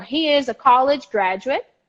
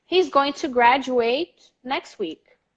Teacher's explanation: the stress in the first syllable is very strong and the last syllable is pronounced like chocolate